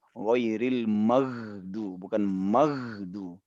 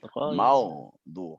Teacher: Ghain itu kembalikan dia ke tenggorokan